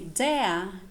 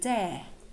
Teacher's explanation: Nowadays, this diphthong is becoming kind of a long vowel. So people don't say dare anymore, but say something like dare.